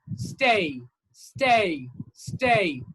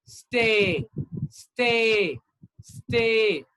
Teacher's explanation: look at the last sound it is like you know moving from a to e